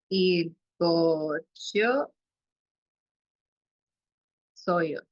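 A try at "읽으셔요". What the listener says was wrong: Lo único es, viste la U que está aquí, suena como U, no tanto como O. Entonces, por eso es ilgushio soyo.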